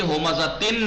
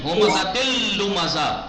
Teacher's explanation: یہ ادغام واجب ہے کیونکہ تنوین کے بعد لام آیا ہے یرملون کا. یہاں بھی آپ پڑھیے ہومزتن نہیں پڑھیے گا، ہومزتن نہیں، ہومزتل لمزہ.